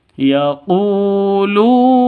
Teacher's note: sama-sama panjang dua ketukan Kenapa karena sama-sama wau mati diawali dengan Dom